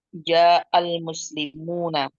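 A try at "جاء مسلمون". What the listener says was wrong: Ja'ah tanpa alif lam. Ja'ah.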